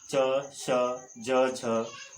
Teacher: जिन व्यंजनों के उच्चारण में पर्श्य और संघर्ष दोनों की स्थितियों का समन्वय होता है, अर्थात जिह्वा स्थान का स्पर्श भी करती है और वायु घर्षण के साथ बाहर निकलते समय संघर्ष भी करती है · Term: पर्श्य संघर्षी